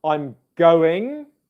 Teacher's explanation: of sound like one word but two syllables to the and both syllables would be quieter and less stressed than the words that come either side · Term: stressed and unstressed